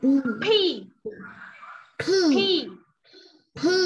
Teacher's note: khi mà mình phát âm P ấy, nó có hơi bật ra, người ta gọi đấy là âm bật hơi nhá